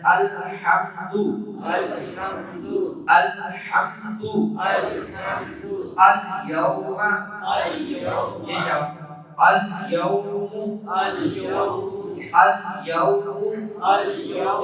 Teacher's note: حروف قمریہ سے پہلے آئے گا تو اس کو ظاہر کر کے پڑھیں گے